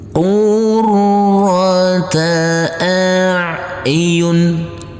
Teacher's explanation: huruf ro kita tekan kita tahan kita baca dengan tebal